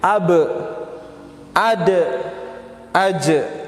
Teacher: Adapun ba, da dan ja maka bunyi pantulannya adalah menjadi e. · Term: huruf qalqalah